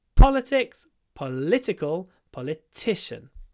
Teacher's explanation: before the unvoiced P political we've got a stretchy L politician there's a pause before the unvoiced T · the stress moves in each form of the word politics first syllable political second syllable politician third syllable